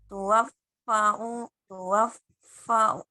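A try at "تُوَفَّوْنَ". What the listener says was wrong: Fau. Fau. Langsung ya. Tuwaffauna. F-nya di tuwaffa. Karena kalau ada tasydid berarti double ya. Tidak tuwafauna, tapi tuwaffauna.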